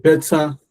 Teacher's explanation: I said better, but I emphasized both syllables better. So we can have this understanding of the fact that these are two syllables.